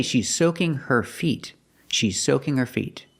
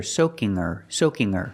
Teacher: we don't hear the H and her we hear soaking her soaking her she's soaking her